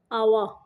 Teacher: واو کو ادا کرتے ہوئے ہونٹوں کو گول کرنا ہے